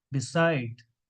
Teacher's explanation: The real pronunciation is beside because the stress is on second syllable